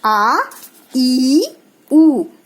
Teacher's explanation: इनके उच्चारण में 2 मात्रा का अर्थात 2 गुना समय लगता है। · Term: दीर्घ स्वर